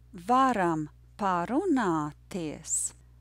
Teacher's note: The rhythm is yes, no. Yes, no, no, no.